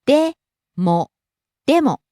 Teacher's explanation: starts high, falls on mo, the second syllable.